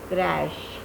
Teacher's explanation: People go by their spellings. The last segment of the spelling they pronounce as ch, and as a result they pronounce this word as crutch, not crash, but the correct pronunciation of this word is crash.